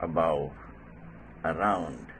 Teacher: the initial sound is very short the shortest form in english language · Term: schwa